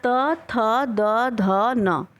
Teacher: Next है 4 त थ द ध न, दांत से, इसको दंती बोलते हैं। स्पष्ट है, त थ द ध न बोलते समय जीभ आपका दांत पे लड़ रहा है